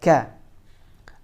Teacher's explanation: Huruf kafnya harus keluar udara.